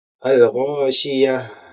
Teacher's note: ha makhrajnya adalah di aqsal halqi, yaitu tenggorokan yang paling bawah